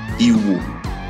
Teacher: uses the low tone on both vowels